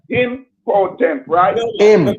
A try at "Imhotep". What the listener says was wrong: No, take out the P. Take out the P. Take out the P and put the M.